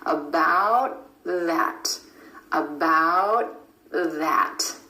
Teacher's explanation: The tongue tip stays up for the T and goes straight into the TH sound. The tongue tip goes under the front teeth for the TH sound. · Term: held T